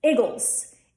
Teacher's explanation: in Philly Eagles has a short I in the front and that'll be iggles Eagles okay that's one difference then there's